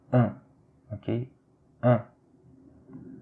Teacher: Alors ici, c'est la voyelle, c'est une autre voyelle nasale, c'est celle de UN